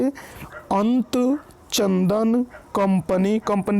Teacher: अगला अंतर है देखिए, अनुस्वार के उच्चारण में नाक से आवाज़ निकलती है और न म की सी ध्वनि आती है।